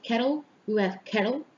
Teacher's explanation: the middle T that gets substituted by a glottal stop